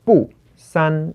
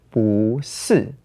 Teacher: If you have watched our tone change series, you may already know that "不" is a character that is normally in the fourth tone but that sometimes changes its tone. So whenever you pair it with a fourth tone together, bù becomes bú So this is why we have here "bù sān" in the original tone, but "bú sì" in the changed tone.